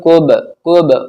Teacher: با ساکن ہے تو قلقلہ ہوگا. کوب نہیں بولنا اسے کیا بولنا کوب کوب.